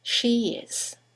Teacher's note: there's a semi-vowel, y, that links the vowel at the end of she to the vowel at the beginning of is.